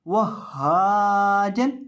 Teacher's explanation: हा को पढ़ने का तरीकाकार, हा का मखरज, हा की अदायगी कहाँ से होती है ये भी देख लें। हा की अदायगी होती है हलक के आखिरी हिस्से से जो सीने के साथ मुत्तसिल है।